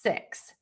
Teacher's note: the word 6 is going to have a more closed mouth, and the tip of your tongue is going to be high and behind your top teeth